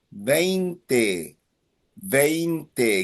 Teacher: It ends in a vowel. So the emphasis is on the second last syllable.